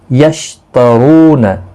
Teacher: رو پیش کی وجہ سے پر پڑا جائے گا